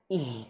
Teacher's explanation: Huruf H dia makhrajnya di pangkal tenggorokan di sini nih